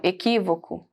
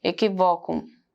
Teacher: O equi é mais forte